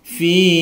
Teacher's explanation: ada bacaan panjang dua harokat karena ada kasroh diikuti dengan ya sukun, dibaca panjang dua harokat atau satu ayunan.